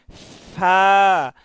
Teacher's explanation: আমরা এই যে হরফগুলো যে উচ্চারণ করি, অনেক সময় বলি হ্যাঁ, আবার অনেক সময় দেখা যাচ্ছে আমরা ফা বলতেছি, একটু ঠোঁটে নিচের ঠোঁটে কামড় দিয়ে ফা।